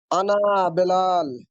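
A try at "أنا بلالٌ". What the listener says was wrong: আনা বিলালুন, আমরা কিন্তু বেলাল বলবো না, আমরা এখনো বাচ্চা, আমরা এখনো বড় হই নাই, বড় হবো আরো সামনে গেলে। আনা বিলালুন, আমি বেলাল।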